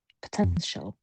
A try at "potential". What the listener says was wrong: you're giving a bit too much emphasis on the the sort of the sie sound the ti sound here.